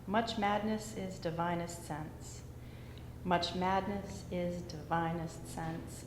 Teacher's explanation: It sounds to me like the first syllable is unstressed. Second syllable is stressed, so it's iambic.